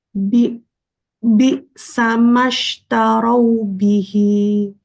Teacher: Bi-nya terhentak satu harokat.